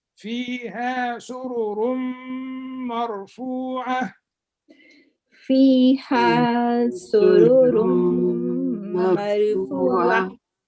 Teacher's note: This is dgham with ghunna, one of the letters of yanmu. We say sururum, but we put ghunna.